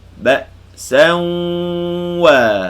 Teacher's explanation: Jadi suara keluar daripada mulut bunyi waw. Suara keluar daripada khayshum bunyi dengung. Panjangkan dengung tadi. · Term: idgham ma'al gunnah